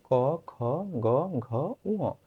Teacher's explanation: কোথায়? গোড়ালি এবং উপরের কোমল তালুর সংস্পর্শে এসে কণ্ঠধ্বনিগুলো উচ্চারিত হয়